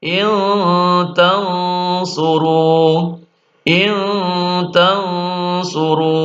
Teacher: Maka nun sukun atau tanwin dibaca samar dan dengung yang lama. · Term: ikhfa hakiki, ikhfa haqiqi